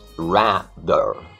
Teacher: a primeira vogal é uma vogal ampla, né? É o A, rather.